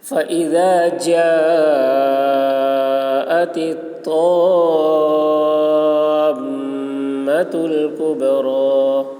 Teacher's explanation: حرف مد کے بعد حمزہ اسی کلمہ میں ہے، اس لیے مد متصل ہوا